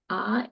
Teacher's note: Ah is an unrounded mouth. You see I really had to open my mouth to say that now.